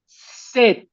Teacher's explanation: La T normalmente al final no suena, pero aquí sí suena.